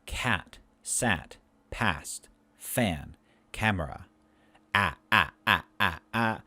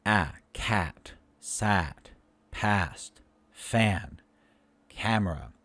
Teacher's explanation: The sound a is low front tense vowel. So for this, the a, we need to lower our jaws, widen our lips, tighten our tongue, and of course breathe out and let the vocal cords go up.